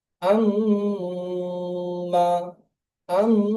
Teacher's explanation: গুন্না নাক থেকে আওয়াজটি আসবে